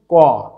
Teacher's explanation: ক শেষ হচ্ছে অধ্বনি দিয়ে, অর্থাৎ কয়হস প্লাস অ সমান সমান ক। যখন ক বলছি তখন ছোট করে একটা টান দিয়ে অ আসছে